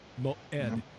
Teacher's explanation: the sound it makes it's just a glottal stop moed it does not have a corresponding sound or letter in